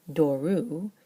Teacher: that last syllable is a diphthong now, u, which is long, which means the Greek is no longer comfortable with a circumflex over the second to last syllable, over the penult, so it changes to an acute.